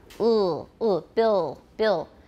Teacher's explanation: the back of the tongue domes and becomes tense. It gets closer to the velum. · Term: dark L